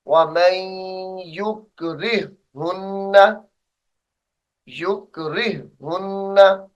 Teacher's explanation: एक हा को छोड़ देंगे यानी हा साकिन को, दो चश्मी हा जो दूसरी है उसको पढ़ेंगे।